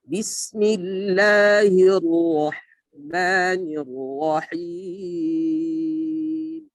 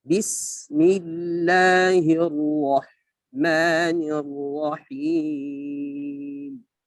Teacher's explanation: makhraj daripada huruf sin. Ya. Dengan sifat sofir, ya, berdesis. Sofiruha, ya, sofiruha sodun sin, ya, dikatakan huruf sofir itu huruf so, sin, ya, jadi kita baca dengan desis, ya.